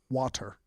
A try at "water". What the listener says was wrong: That sounds like Wadder.